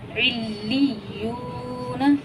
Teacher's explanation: देखिए वाव मद्दा हो रहा है, इसलिए खींचा है। वाव सकीन है, उससे पहले पेश है, तो वाव मद्दा हुआ, इसे हम एक अलिफ़ मिक़दार खींच कर पढ़ेंगे